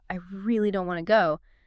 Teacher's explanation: stretching out and emphasizing that word really tells you immediately that their reluctance is very strong. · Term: drawing it out